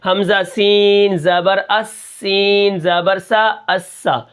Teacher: اس کے بعد جو را ہے ہم اس کو موٹا کر کے پڑھیں گے کیونکہ پیچھے پیش ہے، اور اس طرح سین کے اندر سیٹی ہے